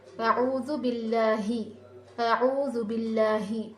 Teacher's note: یہاں پر حمزہ تو نہیں ہے، یہاں پر جو ہے ہا ہے، تو ہا کی آواز نکلتی نہیں، ہا کی آواز آپ کو نکالنا ہے